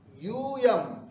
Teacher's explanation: यू दीर्घ है, यहाँ जोर लगाना है, यूयम भी नहीं बोलना है, यूयम, ये ध्यान रखना, यूयम।